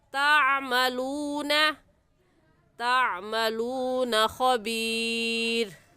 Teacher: واللہ میں لفظ اللہ سے پہلے زبر آ گیا تو لفظ اللہ کو پر یعنی موٹا کر کے پڑھیں گے، اور بما تعملون صفات کا خیال رکھیں گے، تا کی جگہ طا پڑھنا درست نہیں ہے، اور عین حلق کے درمیانی حصے سے نکلتا ہے، نکال کر پڑھیں گے۔ · واو ساکن سے پہلے پیش آ گیا تو واو مدہ ہے اور ایک الف کے برابر کھینچیں گے